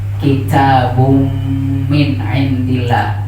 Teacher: tanwin atau nun mati ketika menghadap huruf mim dia jadi idgham, bunyinya kitabum min indillah.